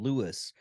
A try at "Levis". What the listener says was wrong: No, not Lewis. It's Levi. The S is silent. It's pronounced Levi's. The S is silent.